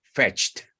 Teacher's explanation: Esa T en realidad no se pronuncia. Simplemente esa T es indicativa de que esa CH suena fuerte, como la Ch de choza, ¿ok?